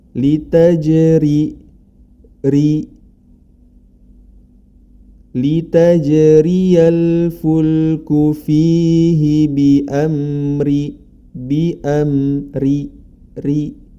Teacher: bilamana ro tersebut berharakat kasrah dibaca tipis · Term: ro tipis